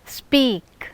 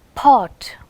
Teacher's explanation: In the word speak and pot, pa is used, right? But in speak, pa is not aspirated.